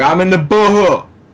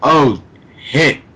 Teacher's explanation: Well, one such throwback is not pronouncing the sound SH. So not pronouncing the sh sound.